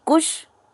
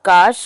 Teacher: क का उ जो है वो ह्रस्व है तो लघु हो गया, और काश का जो है आ दीर्घ है इसलिए गुरु हो गया